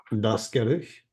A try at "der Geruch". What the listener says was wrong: There is no Umlaut.